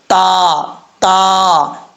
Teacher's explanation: इनका मखरज है जुबान की नोक ऊपर वाले दांतों की जड़ों से लगे तो ता पढ़ा जाएगा, ता ता, इस तरीके से बारीक करके पढ़ेंगे।